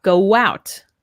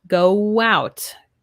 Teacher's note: Here also with w, go out. When we have our two O's, go out. It's like we have a W there.